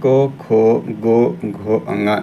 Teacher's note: तो क वर्ग जो है यह कंठ से बोला जाता है